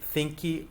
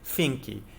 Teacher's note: We have a small little vowel that tends to creep in at the end of words that end in stops. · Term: epenthesis